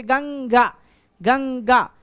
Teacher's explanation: अनुस्वर का उच्चारण नासिक से होता है